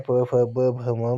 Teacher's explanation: आपका जो उच्चारण स्थान है वो ओष्ठ है